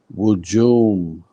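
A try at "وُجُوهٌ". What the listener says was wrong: Hun. Wujuhun. Hun. The last one. Wujuhun.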